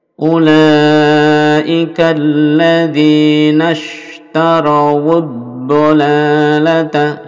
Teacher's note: Ulaika panjang 5 atau 6 harokat. Lalu ini K-nya langsung disambungkan ke lam.